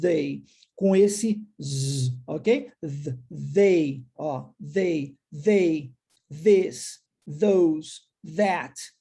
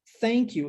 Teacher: Isso é o que nós chamamos em inglês de TH com a pronúncia do som vozeado. Ela é diferente do TH na pronúncia do som não vozeado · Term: TH com som vozeado